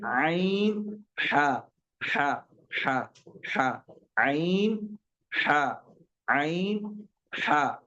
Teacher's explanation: एक चीज दूसरा जो मखरज है वो बीच बीच वाला बीच हलक है। दरमियानी हलक जिसको वस्त हलक कहा गया।